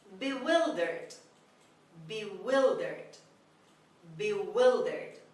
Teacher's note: The stress is on the second syllable on W. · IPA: /bɪˈwɪldərd/